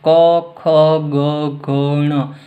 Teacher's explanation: ક્યાંથી નીકળે છે ગળામાંથી એટલે આને કંઠીય શબ્દ કહેવાય